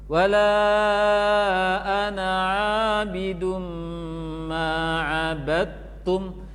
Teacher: Karena itu dal dengan ta boleh gabung. Dal hilang sempurna dalam bacaan, kemudian digabung dengan ta yang bertasydid.